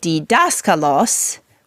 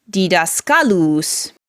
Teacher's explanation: what happens when you make that last syllable long like that when you make the last syllable long it forces the accent to move one spot to the right · So here in this little example with didaskalos, we have the accent moving from the third to last syllable, which is the antepenult, to the second to last syllable, which is the penult